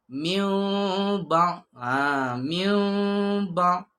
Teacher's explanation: Dia menukarkan bunyi nun kepada mim serta dengung. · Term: iqlab